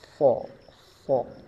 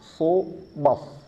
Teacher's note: ujung lidahnya ke bawah ya, pangkal lidahnya dinaikkan sh so sh dan keluar suaranya dari di antara dua gigi seri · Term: huruf shad